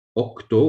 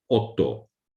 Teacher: So the kt part is changed to tt, which is easier to pronounce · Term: assimilation